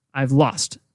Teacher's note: so I've is kind of less stressed lost is stronger stressed